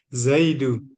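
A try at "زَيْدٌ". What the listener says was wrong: Iya, Zaidun. Iya, Zaidun, Pak. Tanwin.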